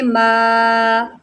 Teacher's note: یہاں پر سب سے پہلی غلطی یہ ہوتی ہے کہ اس کو آپ، یہ جو مد ہے اس کو آپ نہیں کھینچتے، اس کو ما نہیں پڑھیں گے، اس کو پڑھیں گے ما، اس مد کی وجہ سے مد منفصل ہے، کھینچ کے پڑھیں، 2.5 سیکنڈ کھینچ کے پڑھیں